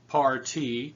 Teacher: the word party has two syllables and one accent par t two syllables par is where we stress that's the accent